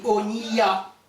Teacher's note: le hataf kamas, lui, se lit O. C'est un petit O, très bref.